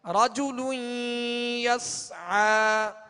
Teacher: عین کو وسط حلق سے ادا کریں گے